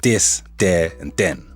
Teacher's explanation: the TH can oftentimes become a D. So this, there, and then will become dis, there, and den.